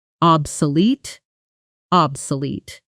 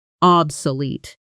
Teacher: stress on the last syllable